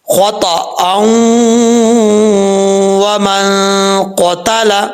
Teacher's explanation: کریں گے تو تب پڑھا جائے گا خطأً ومن قتل، نہیں، واؤ کے اوپر شاد ہو یا نہ ہو، جب رول لگ رہا ہے ادغام کا تو یہاں پہ واؤ کے ساتھ ملانا ہوگا